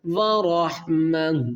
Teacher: گول تا جو ہے اس کو ہم کیا کریں گے، وقف کی صورت میں ساکن کر دیں گے